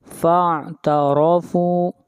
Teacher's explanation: را کو یہاں پر موٹا پڑھا جائے گا، را کے اوپر زبر ہے۔ فاعترفوا بذنبہم، بذنبہم، یہاں پر نون ساکن کے بعد با ہے، یہاں پر اقلاب کریں گے۔